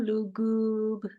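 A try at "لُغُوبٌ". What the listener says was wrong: Ghainnya di ujung tenggorokan. Belum. Lugub.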